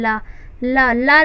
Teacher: अर्थात जैसे ला, ला को जब हम उच्चारित करते हैं तो हमारी जो प्राणवायु है वह पार्श्व साइड से निकल जाती है मुख के, तो इस वजह से इसे पार्श्विक वर्ण कहते हैं।